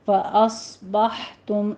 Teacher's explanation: صاد کو سیٹی کی آواز کے ساتھ پر پڑھنا ہے۔ بح میں ہا وسط حلق سے ادا کریں گے، حمز پیدا ہوگی یہاں پہ۔